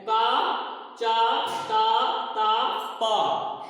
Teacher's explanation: तो कम हवा जिन अक्षरों को बोलने में, जिन व्यंजनों को बोलने में निकलती है उनको अल्प प्राण में रखा गया है।